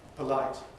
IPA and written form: pəˈlaɪt (polite)